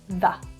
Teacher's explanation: you've got W after the so you're going to pronounce it as the schwa